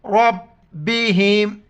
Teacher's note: रा को मोटा करके बा के साथ मिलाएंगे